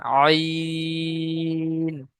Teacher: তিন আলিফ টান দিয়ে পড়তে হবে